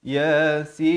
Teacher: Yang betul ya itu 2 harakat, sin itu 6 harakat.